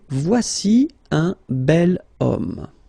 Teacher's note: The reason is that it starts with the sound O, because if you remember carefully, H is not pronounced, so H doesn't exist phonetically